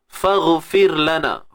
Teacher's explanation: Huruf ghain yang mati tu kita kena tebalkan dia. Kena tebal. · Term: huruf tebal